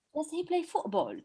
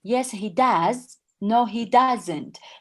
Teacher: So in the answer, does should be more emphasized. And in the question, play should be more emphasized.